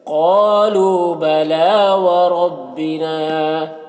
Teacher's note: را کو پر پڑھیں گے، نا میں الف مدہ ہے، ایک الف کے برابر کھینچیں گے